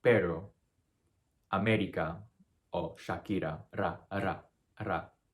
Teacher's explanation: it's a very rapid tongue tap against the roof of your mouth, so it's very fast.